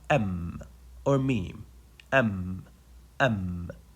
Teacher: you just let the Two Lips come in complete contact without pressing you don't have to press just say m or mem m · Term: meme